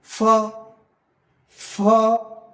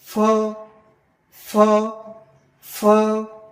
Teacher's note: হচ্ছে ঠোঁট, দেখেন ফ, ফ, আমরা বাতাস বের করার চেষ্টা করবো, দাঁত দিয়ে ঠোঁটের মধ্যে আমরা লাগাবো, লাগিয়ে আমরা ভিতরে থেকে কি গলার থেকে আমরা বাতাস বের করবো,